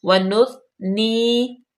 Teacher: وَنُثْنِي، وَنُثْنِي عَلَيْكَ، ٹھیک ہے، واو پہ زبر، نون پیش، فا، حروف لطفیہ ہے اور ثا پہ بالکل سیٹی کی آواز نہ آئے، وَنُثْنِي، یا مدہ لمبا کریں گے، جو ہے اس کو 2 حرکت کے برابر